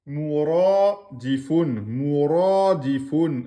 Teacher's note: Attention ici, ra, emphatique, deux temps.